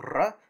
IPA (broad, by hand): r